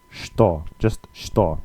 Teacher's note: It starts with the ch sound, the ch, but obviously it's not ch-to, it's shto, just shto. So the ch changes into a sh sound.